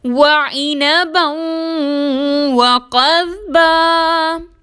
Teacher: وعنبًا میں با کے اوپر دو زبر کی تنوین ہے اور اس کے بعد حروف یومن میں سے واو آ رہا ہے، مشدد کر کے غنہ کے ساتھ ادا کریں گے